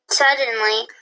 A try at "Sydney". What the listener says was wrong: Not suddenly. That Y is going to make an I sound.